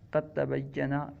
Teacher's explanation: قد تبین، اس میں دال اور تا دونوں کا مخرج ایک ہے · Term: متجانسین